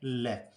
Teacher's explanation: पार्श्व का अर्थ होता है पास। वे व्यंजन जिनके उच्चारण में जीवा मसूड़ों को छूती है और हवा का प्रमुख वेग जीवा के आसपास या अगल बगल से निकल जाता है, उस व्यंजन को पार्श्विक व्यंजन कहते हैं, जो कि एक है ल।